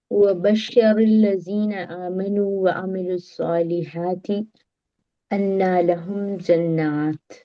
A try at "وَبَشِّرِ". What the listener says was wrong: Yes, wabashir, no bashar. Yes, bashir. This is fi'il amr.